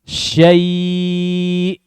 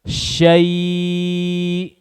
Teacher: sempurnakan fathahnya buka sya, kemudian masuk ke ya yang sukun, semisal dengan kasroh. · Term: lin